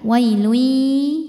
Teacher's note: cara bacanya tanwin dileburkan ke ya. Wailui sambil dengung. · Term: idgham bi gunnah